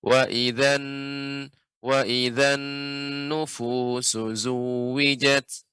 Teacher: Tapi untuk nun bertasydid Pak, harus lebih lama. Sedikit lagi diberi tempo gunnahnya. Wa idzan nufusu zuwijat.